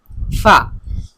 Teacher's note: আরবিতে ফা যে হরফটা আছে এটা উচ্চারণের সময় আমাদের উপরের দুইটা দাঁত নিচের ঠোঁটের সাথে লাগিয়ে উচ্চারণ করি